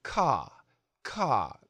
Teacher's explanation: in the UK they say something like caw caw we don't hear the R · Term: non-rhotic R